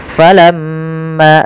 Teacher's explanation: ada gunnah di lafal mim dan wajib kita tahan dahulu sepanjang 2 harakat. Maka kita tahan dulu suara mimnya, ya 2 harakat.